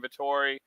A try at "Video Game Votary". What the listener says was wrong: Votary. Video Game Votary. You said Vittori. It's Votary.